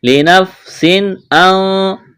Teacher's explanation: تنوین کے بعد حروف حلقی میں سے حمزہ ہے، یہاں پر اظہار کریں گے، آواز ناک میں نہیں چھپائیں گے، غنہ نہیں کریں گے.